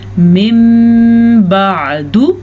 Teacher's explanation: نون ساکن کے بعد با آیا ہے تو یہاں بھی نون ساکن میم میں بدل جائے گا, اقلاب کا قاعدہ ہو جائے گا.